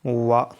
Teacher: तो ये दांत और ओष्ठ दोनों से बोला जाता है, तो ये दंतोष्ठ हो गया। · जाता है एक बार अगर आप इसका उच्चारण करेंगे वा तो ये दांत और ओट दोनों से बोला जाता है